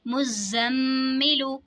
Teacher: मुज़म्मिलु, यहाँ पे देखें जी ज़ा पे भी तशदीद है, मीम पे भी तशदीद है, तो ज़ा और मीम दोनों को हमने जमाओं के साथ अदा करना है, लेकिन फ़र्क ये होगा कि ज़ा पे सिर्फ जमाओ करना है और मीम में गुन्ना और जमाओ दोनों करना है, क्योंकि मीम मुशद्दद में हमेशा गुन्ना होता है।